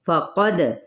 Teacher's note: कौफ पुर पढ़ते हुए आगे दाल पे कलकला किया जाएगा